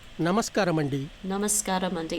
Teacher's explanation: The stress is on ska.